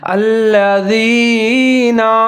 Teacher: جیسے الذین، آگے زال ہے، اس کے نیچے زیر ہے تو زال کا خیال رکھنا ہے، اس کو ظاہر کر کے پڑھنا ہے، سیٹی نہیں بجانی۔ الذین، یا ساکن ہے، دال اور جا ملا کے پڑھیں گے، نون کے اوپر زبر ہے۔